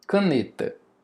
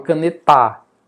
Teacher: a sílaba tônica, a sílaba mais forte, é a penúltima da palavra. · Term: paroxítona